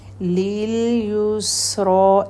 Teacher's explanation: رو کو کھڑا زبر ہے اور ہیوی لیٹر ہے رو یہاں پر